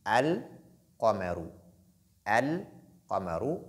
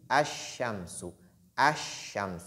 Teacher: on fait ce qu'on appelle l'assimilation la lettre Lam elle est introduite dans la lettre suivante exemple quand je dis alar alar vous entendez Lam alar la